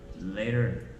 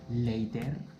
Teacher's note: The next T sound is actually called flap T. This is when the T becomes a soft D sound. So instead of T, it becomes a soft D sound.